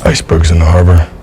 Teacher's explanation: the word in is reduced to a quick n the vowel is essentially dropped · the s in icebergs is voiced